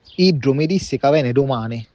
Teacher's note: I think I hear the initial D pronounced like an R, as in an alveolar tap, like in the Palermo accent, at least in the word risse. · Also notice that the doubled D in this pronoun is pronounced like G in both Palermo and Agrigento. In the other samples it sounds more like a doubled D or D.